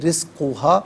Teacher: رزق علیحدہ، ہا علیحدہ ملا کر پڑھیں گے۔ رزقہا، را کے نیچے زیر، را کو باریک کر کے پڑھا جائے گا۔